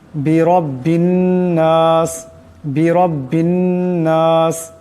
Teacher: এই রাকে মোটা করে পড়তে হবে আবার এই বা এই নুন কে ধরবে এক আলিফ পরিমাণ গুন্না